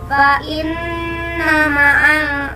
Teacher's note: dengan dengung serta ditahan 3 harokat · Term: unah